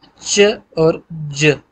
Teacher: affricates में हल्का सा माउथ का क्लोजर होता है, उसके बाद फिर फ्रिक्टेटेड रिलीज है